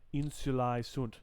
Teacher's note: ae together is a diphthong which sounds like i